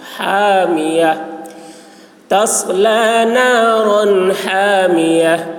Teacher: تصلی نارا، رن یہاں پر اظہار ہوگا، تنوین کو جلد ادا کریں گے